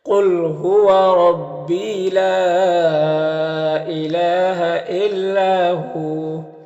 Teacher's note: قاف حروف مستعلیہ میں سے پر پڑھیں گے، را کے اوپر زبر را کو پر پڑھیں گے · یہاں پر وقف کریں گے تو واو مدہ ہوگا، تو ایک الف کے برابر کھینچیں گے